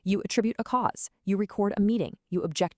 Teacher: same word as an action, a verb, the stress shifts over to the second syllable